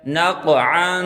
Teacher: نون قاف زبر نق، عین دو زبر عن، عین پر اخفا کریں، عین کو گلے سے نکالیں